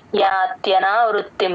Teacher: త కింద య వత్తు కూడా క్లియర్ గా వినిపించాలి